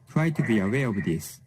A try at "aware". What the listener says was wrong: a little bit of trouble with that W too. So when you're pronouncing that aware, that W, you want to round your lips a little bit more. Aware, aware.